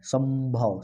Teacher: जैसे स और भ के बीच में म का मेल है, संभव। संभव बोल रहे हैं तो इसमें थोड़ा सा म आ रहा है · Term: संयुक्त या संपृक्त ध्वनि